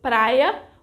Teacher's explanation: we have an hiato because the ditongo I occupies a different syllable from the final A